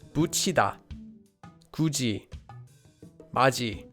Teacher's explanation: Korean also changes the digut sound to an easier J sound.